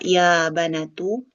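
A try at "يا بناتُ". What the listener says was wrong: Ya banatu panjang. Natu.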